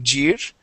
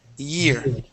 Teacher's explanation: the trick to pronouncing an English Y is to start that off with an e sound so instead of saying J we want to say e year